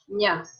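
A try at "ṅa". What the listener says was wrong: You're going nya. You're using like the 3. Nya. Nya. Like El Nino. That's later. That's another sound. Nya.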